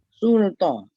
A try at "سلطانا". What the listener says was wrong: Dekat lam tu jangan moncong. Sin tu je yang moncong. Sul. Jangan sul. ringan. Lam. Sultana.